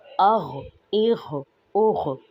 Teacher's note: غین کو ادنا حلق سے ادا کریں گے، اور یہ بہت موٹے حروف میں سے ہے